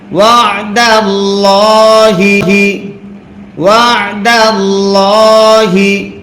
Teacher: আল্লাহ শব্দের লামের ডাইনে জবর যদি হয়, আল্লাহ শব্দের লাম তখন মোটা করে পড়তে হয়।